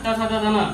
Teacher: ये हमारे दांत से निकलते हैं